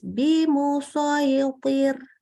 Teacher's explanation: Jadi walaupun poknya tebal, tetap ro-nya tipis.